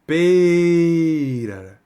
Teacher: O que é uma palavra paroxítona? É que a penúltima sílaba é a sílaba forte.